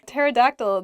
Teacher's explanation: pterodactyl begins with a P but we don't say the peas just starts with a T sound